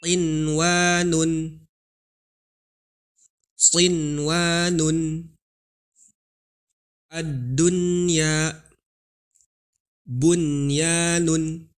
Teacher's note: Walaupun secara kaidah itu masuk ke idgham bigunah, yaitu nun ketemu wawu, tetapi karena dia 1 kalimat maka tidak dibaca idgham tapi diizharkan huruf nunnya, dibaca jelas